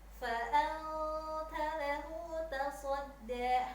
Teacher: Jadi seolah-olah ada bunyi ang, nunnya samar-samar dibacanya. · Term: ikhfa